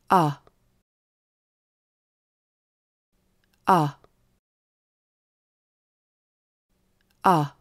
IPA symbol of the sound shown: ʌ